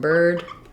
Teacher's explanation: Again, the only difference is if I'm saying bird, it's going to be stressed, a little bit longer